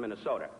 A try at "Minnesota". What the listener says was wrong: Not Minnesota, it's Minnesota. Not soda.